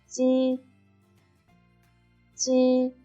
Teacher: the tip of tongue is against the lower incisors, and the front of the tongue is closely against the hard palate, and the air blows out of the narrow slit and rubs into a sound. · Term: voiceless alveolo-palatal affricate